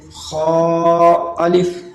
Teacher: اس کی کھینچنے کی مقدار 2 الف ہے